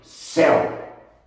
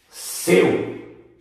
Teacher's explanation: É o ditongo EL, mas o som é fechado. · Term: som fechado